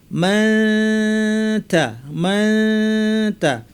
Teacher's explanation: উপর পাটির দাঁতের গোড়ার দিকে কাছাকাছি জিব্বা নিব, লাগাবো না, নাক থেকে গুন্না করবো। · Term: ইখফা